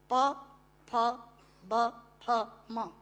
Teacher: प फ ब फ म दोनों होंठ मिलाकर बोले जा सकते हैं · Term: ओष्ठांग